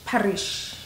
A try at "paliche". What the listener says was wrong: No, you can't say ri. Palichi.